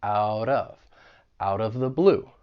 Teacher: I'm going to pronounce that T as a flap T. It's going to sound like a soft D. And then I will link it with the vowel sound in of.